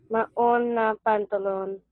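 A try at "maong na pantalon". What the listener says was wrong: Not maon. Ong. Ong. Say it. Maong.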